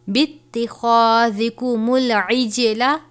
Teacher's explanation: جیم ہے، قلقلہ کریں گے